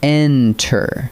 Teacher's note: Enter, with the beat on the first syllable, not the last.